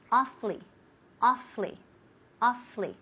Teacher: Pero muchas veces comimos, we eat one of those syllables. Entonces se queda en casi solamente 2 sílabas.